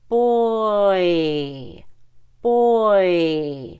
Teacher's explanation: Americans start with the long O and end at the long e boy boy so you pull way back and then you go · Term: oi